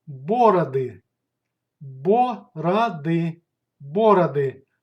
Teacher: Stress goes to the first syllable in бороды